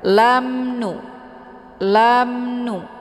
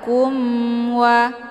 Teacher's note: bunyi mimnya dibunyikan secara jelas atau jelas bunyi m-nya. Cukup ditekan saja, tidak perlu ditahan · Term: izhar syafawi